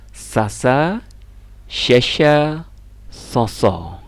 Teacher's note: Sin itu tetap di ujung lidah tapi tidak nempel ke gigi.